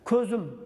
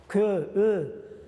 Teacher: Ko'zda ö, lablangan, qarang, lablarimiz cho'chchayapti.